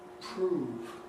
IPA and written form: prₒuːv (prove)